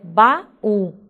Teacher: esse U passa a ser uma sílaba tônica, se apoiou numa sílaba anterior, que funcionou como uma sílaba átona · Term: hiato